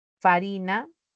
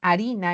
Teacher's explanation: Entonces hay una pérdida de la labiodental de esta F.